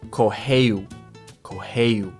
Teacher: When there's two R's together, it's an H sound. So when there's an R at the beginning of the word or there's two R's together, you make an H sound.